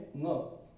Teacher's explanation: इसी प्रकार ङ का उच्चारण होता है कंठ, तो ङ का उच्चारण कंठ के साथ साथ नाक भी है